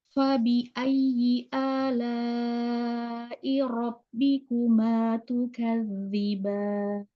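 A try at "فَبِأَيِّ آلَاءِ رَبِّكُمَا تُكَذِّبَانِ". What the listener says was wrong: Fabi ayyi ala rabbikuma tukadziban. Fa-nya jangan dihentakkan.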